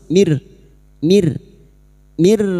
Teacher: Nun sukun atau tanwin yang bertemu dengan 2 huruf ini, yaitu huruf lam dan ro, masuk tanpa mendengung, masuk tanpa mendengung, tanpa ditahan lama-lama, hanya masuk mir rabbil.